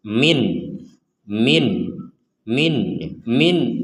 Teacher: karena yang min ketika sukunnya ditulis artinya nunnya ini dibaca dengan jelas